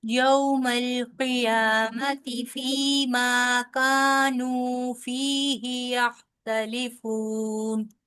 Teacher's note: یا کے اوپر صرف کھڑی زبر ہے، ٹھیک ہے؟ صرف یا لمبا ہوگا، میم لمبا نہیں ہوگا